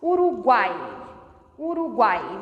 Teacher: Aqui, o A é a vogal, porque a letra é o fonema pronunciado com mais força. E o U e o I são semivogais, porque saem um pouco mais fracos. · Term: tritongo